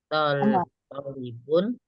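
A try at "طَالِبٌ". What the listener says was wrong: Tolibun panjang. Tolibun.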